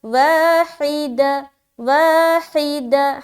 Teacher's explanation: حا کو نکالیں گے حلق سے، واو میں ہم الف مدہ کر رہے ہیں، دال زبر دا، اور تا کے اوپر 2 زبر کی تنوین ہے، 2 زبر کی تنوین کے بعد حرف فا آ رہا ہے۔